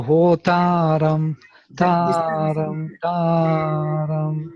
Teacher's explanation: It is always samahara. It is composed of udatta and anudatta. It is always falling pitch. · It is falling pitch from the height of udatta. It falls down into the lower pitch. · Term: svarita